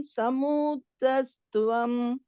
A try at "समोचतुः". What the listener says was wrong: சமோச்சதுஹு, சமோச்சதுஸ் இருக்கு இல்லையா, அந்த இஸ் விசர்க்கம் போட்டுக்கோங்க, அதோட நிறுத்திக்கணும். துவம் வந்து அடுத்த பாதம்க்கு வந்துடும். சமோச்சதுஹு.